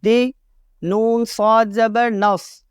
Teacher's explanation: صاد کو موٹا پڑھنا ہے کیونکہ صاد حروف مستعلیہ میں سے ہے